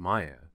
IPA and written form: ˈmaɪə (Maya)